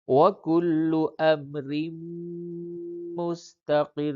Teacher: را پہ تشدید ہے، یہاں پہ دو را کی آواز نکالی جائے گی